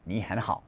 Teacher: three third tones in a row, the first two, all right, are going to change to second tones, and only the last one will stay as a third tone.